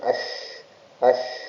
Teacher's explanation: Ini huruf shin, nash, punya sifat tafashi, mengalirnya nafas ya dengan deras, dan juga dia suaranya juga mengalir.